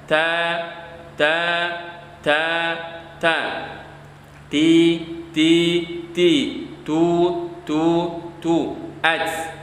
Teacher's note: huruf ta makhrajnya ada di ujung lidah, di ujung lidah, di ujung lidah yang menempel ke bagian hanak. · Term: makhraj ta